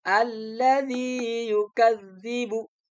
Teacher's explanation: Zi-nya dibaca panjang. Alasannya ada kasroh diikuti ya sukun. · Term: panjang asli